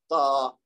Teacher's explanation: زبان کی نوک سنایا اولیا، یعنی آگے والے جو 2 دانت ہیں ان کی جڑ کے ساتھ ملے گی تو پھر تا ادا ہوگی. یعنی اگر آپ تا بول کے دیکھیں تا، تو یہ آپ کے جو دانت ہیں 2 سامنے والے، ان کے جڑ یعنی اندر کی طرف جو جڑ ہے اس کے ساتھ زبان کا کونا جو ہے، نوک اس کی جو ہے وہ ٹکرائے گی تو پھر تا ادا ہوگی.